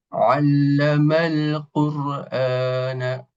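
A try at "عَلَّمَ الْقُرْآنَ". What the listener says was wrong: U-nya coba tebalkan lagi. Ada kaidah kullul isti'la mufakhamah. Jadi setiap huruf isti'la ini ditebalkan.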